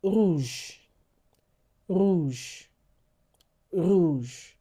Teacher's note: the French R is produced at the back of your throat